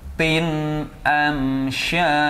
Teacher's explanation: Tanwin bertemu alif. Maka harus dibaca jelas. Jelas. Jangan mendengung. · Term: Izhar halqi